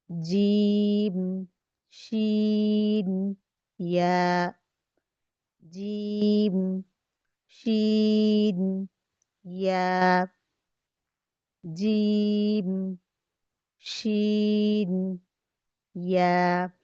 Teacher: वस्त जुबान जब बिल मुकाबिल ऊपर के तालु से लगे तो इससे जीम, शीन, या अदा होते हैं। तो अब ये नहीं कि बिल्कुल ऊपर टच ही रहे, कहीं पे टच होगी फिर शुरू में छोड़ दी जाएगी, आखिर पे फिर टच होगी, इस तरह से। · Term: हुरूफ शजरिया